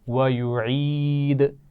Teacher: عین کے مخرج کا خیال رکھنا ہے اور دال پر قلقلہ کیا جائے گا